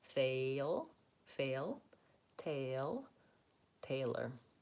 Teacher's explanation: which in American English glides between A and I